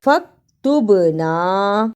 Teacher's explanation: با جزم کی صورت میں حرف قلقلہ ہے، یعنی با کو ہلا کر پڑھنا ہے